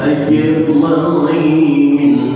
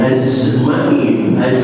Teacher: Jika dibaca dengan benar dalam makhrajnya maka akan timbul qalqalah ajma'in, jangan azma'in. Azma'in itu qalqalahnya dibikin, bukan alami, tapi ajma'in otomatis dia akan timbul pandulan qalqalah wajibnya benar.